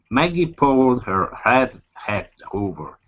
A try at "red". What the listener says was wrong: Give me a good R on red.